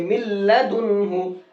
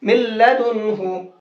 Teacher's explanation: मीम को लाम के साथ में मिला करके पढ़ेंगे और बगैर गुन्ने के पढ़ेंगे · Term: इदगाम